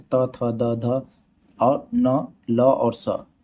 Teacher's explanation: जिन वर्णों का दांत से उच्चारण होता है उन्हें दंत वर्ण कहते हैं।